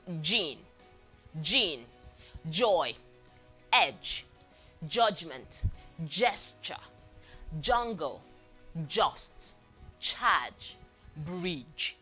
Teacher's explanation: this is the voiced affricate, made with the tip of the tongue also on the alveolar ridge because it is starting with an alveolar sound.